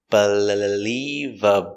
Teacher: Also, the L's are different. The first L is a light L, in the front by the teeth